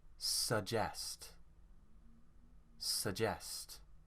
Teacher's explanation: Here the stress is on jest.